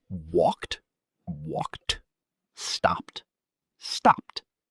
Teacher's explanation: the ed sounds like T